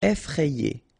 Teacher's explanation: remember, double F, so you open the E